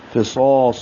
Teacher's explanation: گے نون ساکن کے بعد فا آنے کی وجہ سے، فصا صاد کو موٹا پڑھیں گے، دو حرکات لمبا کریں گے اور میم پر زبر جلدی سے پڑھیں گے، لہا، ہا کو